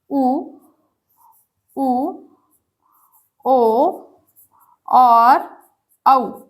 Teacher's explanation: होठ हमारे गोल हो जाए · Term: वृत्तामुखी